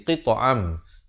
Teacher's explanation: Daripada qita'an jadi qita'am. Tapi jangan lupa masukkan beserta dengung ke dalam mim, dua harakat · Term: idgham bi gunnah